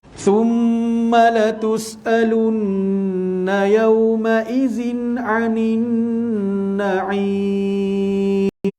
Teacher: thumma mim bersabdu wajibul gunnah, wajib dengung dalam panjang dua harakat